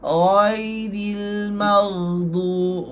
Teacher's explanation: Sebab suara ya mati tu dia rakhawah. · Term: ya lin